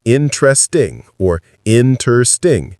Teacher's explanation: Native speakers say it with three syllables, interesting or interesting. The middle syllable gets compressed or sometimes disappears completely. We don't say interesting.